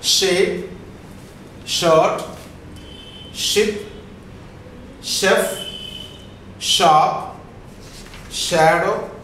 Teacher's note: Just back of the alveolar, the front of the tongue comes closer to the post alveolar, and there will be a friction during the production of sound.